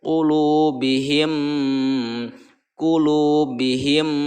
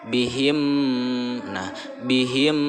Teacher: huruf mim bertemu dengan huruf mim itu cara bacanya harus idgham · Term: Idgham Mutamatsilain